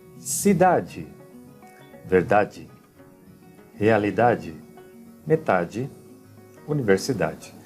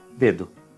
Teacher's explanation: Somente ao final das palavras nós vamos pronunciar como di ou diz.